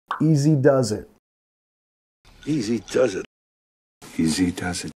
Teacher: Nota el signo de Z en does, does it, y vinculando al it